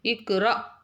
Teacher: சுக்குன் பெற்ற ஹம்ஸாவை தொண்டையில ஒரு தொண்டையில ஸ்டாப் பண்ணி லைட்டா அசைக்கணும்